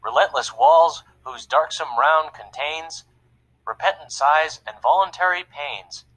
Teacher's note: a popular type of meter with 10 syllables per line and with every unstressed syllable followed by a stressed syllable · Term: iambic pentameter